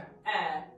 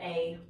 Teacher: don't feel like you have to diphthong it on the end. It's just eh. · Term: eh vowel